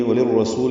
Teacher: وللرسول میں لام کو را سے ملائیں گے، ادغام شمسی را پر پڑھیں گے